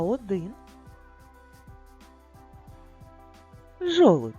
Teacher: в слові Жолудь чуємо Т але пишемо дь